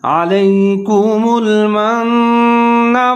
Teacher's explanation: یہاں پر نون کے اوپر مشدد ہے، آپ نے ادغام کرنا ہے، غنہ کرنا ہے